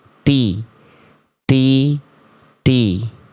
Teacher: Huruf ta dia pangkal lidahnya karena dia tipis dia enggak naik maka bunyinya ti ti ti ti.